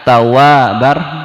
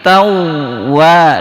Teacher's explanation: tawabar itu tidak ditahan, tapi tawa ditahan.